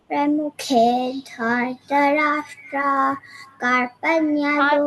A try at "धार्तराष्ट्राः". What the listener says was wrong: धार्तराष्ट्राः visarga has to be said धार्तराष्ट्राः say the visarga darling